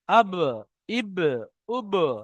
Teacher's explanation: দুই ঠোঁটের ভিজে অংশ হতে উচ্চারিত হয় বা